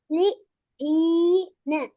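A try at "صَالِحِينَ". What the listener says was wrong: ஹி ஹி வரணும் ஸ்வாலிஹீன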